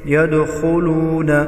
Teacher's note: दाल हुरूफ क़लक़ला है, दाल पर क़लक़ला करेंगे। यदखुलून खा हुरूफ मुस्तालिया है, मोटा करके पढ़ेंगे।